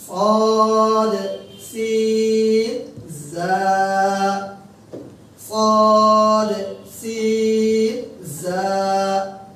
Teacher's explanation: এই তিনটি হরফ পড়তে হবে জিহ্বার আগা এবং নিচের দাঁতের পেট, নিচের দাঁতের পেট বা আগা, নিচের দাঁতের পেট বা আগা, যার যেখানে সুবিধা, পেট থেকেই সাধারণত উচ্চারিত হয়।